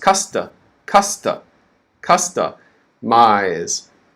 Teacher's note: the third syllable is stressed, but it's less stress. We call that minor stress. So up, right, it's major stress, and down, it's minor stress.